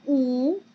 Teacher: this is a high vowel because the position of my jaw is very high.